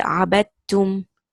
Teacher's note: You will not say عبد. You will not say the dal sukun. You will say عبدتم. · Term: idgham